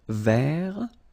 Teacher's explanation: So masculine form, don't pronounce the final T.